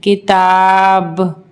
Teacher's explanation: وقف کی صورت میں با پہ ہماری آواز پلٹ کر آئے گی کیونکہ یہاں پہ وقف ہو جائے گا تو یہ حروف قلقلہ کا حرف بن جائے گا.